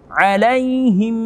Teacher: Ada mim sukun bertemu dengan mim di sini. Alaihimmu, ada mim sukun bertemu dengan mim, namanya idgham mimi